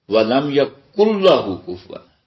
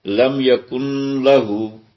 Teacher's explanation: مثال کے طور پہ ہم نے سیکھا ہے تنوین میں کہ یہ نون ساکن جو ہے نا، اس کے بعد اگر لام آ جائے تو نون پڑھا نہیں جاتا، وہ گم ہو جاتا ہے، اس کی نون کی آواز مدغم ہو جاتی ہے لام میں۔ تو یہاں ایک لفظ آیا آخری آیت میں وَلَمْ يَكُنْ لَهُ كُفُوًا، جبکہ یہ تھا لم یکن۔